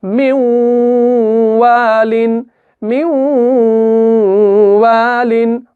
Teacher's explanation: 2 से 3 हरकत तक का गुना करना है